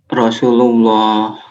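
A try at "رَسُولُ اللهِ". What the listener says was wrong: Harakat akhir.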